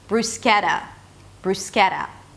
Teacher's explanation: since the T is between 2 vowels, it's a flap T, bruschetta, bruschetta.